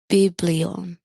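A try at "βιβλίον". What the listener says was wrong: You missed one accent. One accent. It was number 4, biblion. right, that's all I'm saying is we're just putting the extra stress on that.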